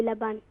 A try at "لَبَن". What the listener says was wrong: don't recite quick, recite very slowly, laban.